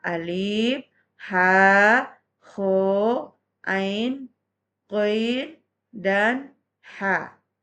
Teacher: huruf-huruf yang keluar dari tenggorokan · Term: huruf halqi